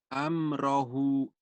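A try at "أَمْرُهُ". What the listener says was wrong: Salah baris, salah bunyi ya. kalau amrohu berarti fathah.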